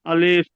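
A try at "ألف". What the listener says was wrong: আলিফ আপনি টান দিয়েছেন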